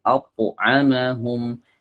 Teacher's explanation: Jadi suaranya diarahkan ke langit karena dia memiliki sifat isti'la.